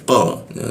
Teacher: lidahnya dinaikkan sehingga tidak ada hembusan udara ketika membaca qoh seperti itu